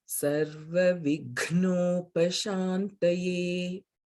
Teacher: in the Shuklam Baradharam Vishnum Shlokaha, Sarva Vighnopashantaye, the Ghna is also Mahaprana.